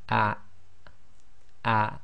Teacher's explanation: the hamza acts as the glottal stop in Arabic, and you should feel a slight blocking of the bottom of your throat